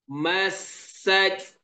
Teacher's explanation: kena bezakan ta yang angin di hujung tu dan juga ha